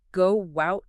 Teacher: almost like a W sound between the words